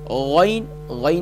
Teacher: غین کا مخرج بھی ٹاپ آف تھروٹ یعنی گلے کے اوپر والے حصے سے ادا ہوتا ہے، ادنی حلق سے ادا ہوتا ہے. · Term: حروف حلقیہ